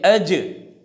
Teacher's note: جیم کی آواز جو ہے زبان کے بیچ اور اس کے مقابل اوپر کے تالو پر جا کر رک جاتی ہے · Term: جیم کا مخرج